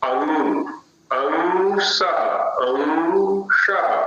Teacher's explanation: अ के साथ अनुस्वार बोलेंगे तो पहले अ उच्चारण होगा, उसके बाद हम नासिका पर जाएंगे।